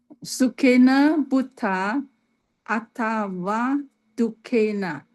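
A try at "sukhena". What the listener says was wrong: Okay, great.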